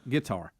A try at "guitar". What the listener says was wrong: Yeah, you got the emphasis on the wrong part. It's a guitar. Guitar.